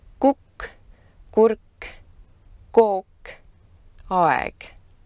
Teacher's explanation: K is a voiceless velar plosive. You articulate this sound by pushing the back of your tongue towards the soft palate, also known as the velar region of your mouth.